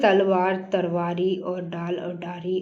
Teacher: अवधि में ल ध्वनि प्राय र हो जाती हैं।